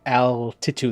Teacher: That's a light L. That's not a dark L.